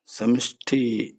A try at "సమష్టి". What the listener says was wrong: సమిష్టి కాదు, సమిష్టి కాదు. కదా గమనించండి, సమిష్టి వేరు, సమష్టి వేరు. సమష్టి వ్యష్టి, సమష్టి అనే శబ్దాలు వస్తాయి. వ్యష్టి అంటే వి అష్టి, సం అష్టి, సమష్టి. సం అష్టి, సమష్టి, వి అష్టి, వ్యష్టి, సమష్టి.